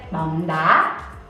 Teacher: These two words each has an up tone, but when we say them all together, we don't actually say bóng đá. We connect them and make the word bóng a little bit lower and then go up on the word đá.